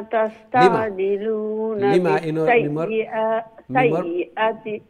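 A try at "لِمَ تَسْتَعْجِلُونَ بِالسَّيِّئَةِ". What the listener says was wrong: মিমর বাদে ইনো আলিফ নাই, মিম একটা লং হইতো না। লিমা তাস্তাজিলুনা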